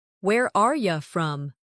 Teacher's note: In fast speech, are you often sounds like are ya.